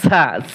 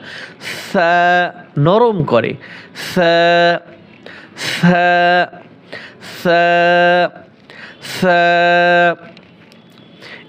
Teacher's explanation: জিহ্বার আগা উপরে দাঁতের আগার সাথে লাগিয়ে নরম করে